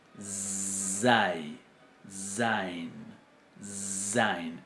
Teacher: no es una Z propiamente dicha, sino es lo que se llama una fricativa alveolar sonora o sibilante, que es zai, zain, zain.